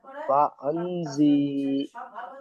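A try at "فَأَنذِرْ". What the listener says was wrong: টান হবে না, সি টান নয়, গুন্না আছে, নুন সেকেন্ডটা গুন্না করতে বলেছি, ইকফা আছে। ফাআন জির, কোনো টান নেই, জাল রজের ডাইরেক্ট জির। ফাআন জির।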